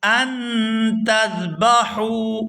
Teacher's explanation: یأمرکم ان تذبحوا بقرہ، یہاں حمزہ کو نون ساکن کے ساتھ ملائیں گے تو اخفا کریں گے